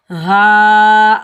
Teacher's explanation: हा के ऊपर खड़ा ज़बर है, इस हा को हम सीने से अदा करेंगे। हा के ऊपर खड़ा ज़बर है, ऊपर छोटी मद है मद्दे मुनफसिल जायज़, जिसको हम 2.5 से 3 अलिफ की मिकदार तक खींच कर अदा कर सकते हैं।